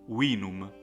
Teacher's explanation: v is not pronounced like in english but it's pronounced like the woo of wet and so the latin word will be pronounced wiinum enemy and